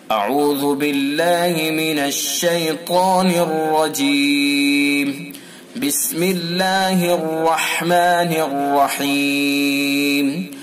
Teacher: طا، الف اور را ان کو پر یعنی موٹا پڑھا جاتا ہے، اور بسم اللہ کے اندر را اور الرحیم کا را ان کو پر پڑھا جاتا ہے